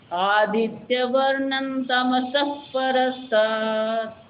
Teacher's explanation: સ પછી વિસર્ગ ને વિસર્ગ પછી પ એટલે વિસર્ગનો હ નહીં બોલાય ફ ફળનો ફ